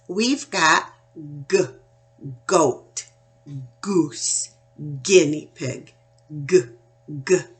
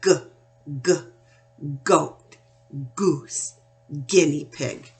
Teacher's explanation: I'm keeping that sound in the back of my throat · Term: hard G